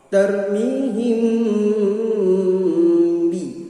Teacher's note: agak samar bacaannya sebab ketika membaca mim langsung bertemu ba. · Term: ikhfa syafawi